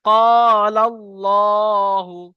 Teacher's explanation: আল্লাহ শব্দের লামকে পুর করে পড়তে হবে